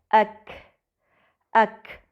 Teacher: کاف میں ہوا بھی باہر آتی محسوس ہوتی ہے، جو کہ اس کی صفت ہے جس کے بارے میں ہم آگے پڑھیں گے انشاءاللہ۔